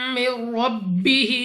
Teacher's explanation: نون ساکن کے بعد را، یہاں پر غنہ نہیں کرنا